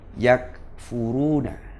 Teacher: Jadi sifat syiddah dan hams yang ada di huruf kaf dan ta itu harus diterapkan secara adil. Syiddahnya ditahan, hamsnya dilepas, dikeluarkan desisnya.